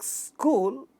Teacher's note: In the word like school, sa and ka, these two words, these two sounds make a cluster. Then you have long u and la at the end of this word. So this is again a cluster at the initial position in this word.